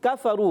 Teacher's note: زبان کی جڑ اور تالو کا سخت حصہ کاف کا مخرج ہوتا ہے